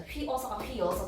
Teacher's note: 휘여서가 되면 반모음 이가 첨가됐습니다. · 위랑 어가 만났는데 위랑 여가 됐어요. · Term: 반모음 첨가